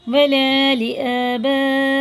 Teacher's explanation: یہ کم سے کم 4-5 الف کے برابر کھینچ کے پڑھا جائے گا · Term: مد متصل